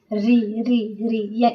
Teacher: ऋ यानी जीभ मोड़कर देखिए ऋ ऋ ऋ इसमें जीभ मुड़ रहा है।